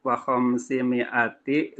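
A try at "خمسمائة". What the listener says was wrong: Wa khamsimi'atin tanwin.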